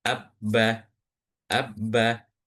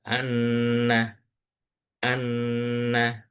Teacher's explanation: Kalau yang tasdid itu kayak nyantol aja abba abbah. Tapi kalau ee yang gunah itu kayak ditahan ee anna anna.